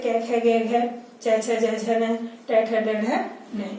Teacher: इन्हें स्पर्श व्यंजन क्यों कहा जाता है? क्योंकि इनके उच्चारण के समय हमारी जिह्वा मुख में किसी न किसी उच्चारण स्थान को छूते हुए या स्पर्श करते हुए निकलती है, इसलिए इन्हें हम स्पर्श व्यंजन कहते हैं।